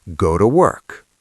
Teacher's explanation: You can't link properly if you're pronouncing to perfectly with a long O. Go to work. No. Go to work. The vowel changes to a schwa. This allows the link to happen faster.